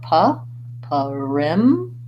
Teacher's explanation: perimeter has perimeter has second syllable stress and I would say kind of thinking about that first syllable as a schwa sound so it's not it's kind of like puff rim just like